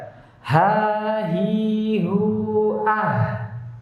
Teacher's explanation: Ketika mengucapkan hurufnya tidak ada getaran pada dua pita suara. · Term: hams